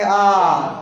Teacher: बड़ा उ को उच्चारण करने में जितना समय लगता है इतना समय बड़ा आ के बोलने में लगेगा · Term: दीर्घ